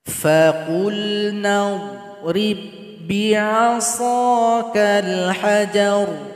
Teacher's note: huruf dhad jangan dipantulkan karena tidak masuk huruf qalqalah. Ba sukun yang berjumpa dengan ba yang bertasydid tidak boleh juga dipantulkan.